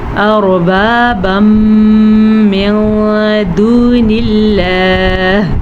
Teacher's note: یہاں پہ ہمارے پاس ہے تنوین. تنوین کے بعد یمون میں سے میم ہے تو ہم ان دونوں کو آپس میں ملا کے پڑھیں گے اور غننے کے ساتھ پڑھیں گے